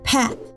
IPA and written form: pæt (pat)